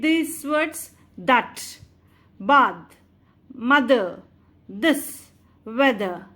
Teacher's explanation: the front part of tongue touches behind the upper teeth while producing the sound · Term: dental fricatives